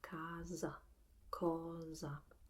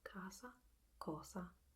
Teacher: in the northern part of Italy we tend to pronounce the S in these two words with a more resounding sound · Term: a harder sound